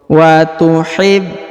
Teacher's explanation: huruf na langsung sambung ke alif lam qamariyah